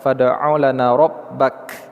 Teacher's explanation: Kalau kita berhenti huruf kaf sukun ini ada hams, ada desiran nafas, kita keluarkan sedikit